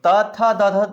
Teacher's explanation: ठीक है, कंठ, उसके बाद होता है तालु, उसके बाद होता है मूर्धा, उसके बाद होता है दंत, उसके बाद होता है होस्ट। तो त थ द ध बोलते हैं तो दांत से चिपकता है